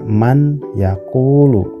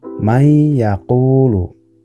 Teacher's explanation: Tidak dibaca man yaqulu, tapi may yaqulu. Bunyi N-nya dimasukkan ke huruf selanjutnya. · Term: idgham